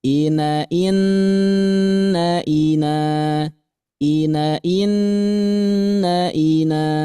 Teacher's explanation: masukkan suaranya ke rongga hidung ya jadi ngirung ah jadi suaranya meng mengirung mengirung ya Oh menghidung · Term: dengung